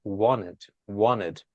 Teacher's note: On some of the American accent, we silent the T. Like we don't say wanted, we say wanted, wanted.